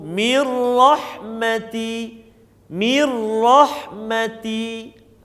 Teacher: Kita kena masukkan ke dalam huruf ra ni tapi tanpa dengung, jangan dengung. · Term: bila gunnah